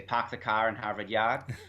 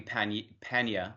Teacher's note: a lot of British dialects, like some American ones, are non-rhotic, which means they do not pronounce their R's